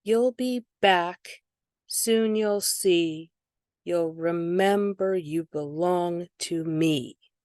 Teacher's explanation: where's the stress? It's on mem.